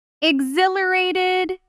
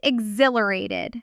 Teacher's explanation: Natives often say exhilarated with barely any breath on that H.